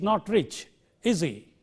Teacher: the question tags reinforces the meaning of the statement and therefore it is a falling tone which should be used